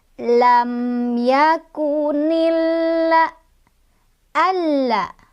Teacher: alif lamnya jadi tidak dibaca, melainkan kita langsung baca ke lam yang kedua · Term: alif lam syamsiyah